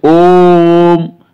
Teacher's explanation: हम जो ओम बोलेंगे तो इसमें 3 गुना समय लगेगा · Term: प्लुप्त स्वर